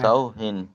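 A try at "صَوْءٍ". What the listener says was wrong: সাও হিন নয়, সাও ইন।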